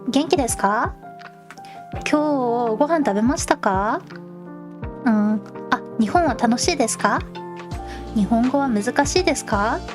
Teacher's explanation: You want it to go up. The intonation, the pitch should go up.